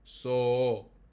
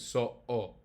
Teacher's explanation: If you said that without the oclusão glotal, without the glottal stop, it would just sound like so.